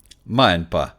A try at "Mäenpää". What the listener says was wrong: Yeah, a little longer in the end, but close enough. Mäenpää.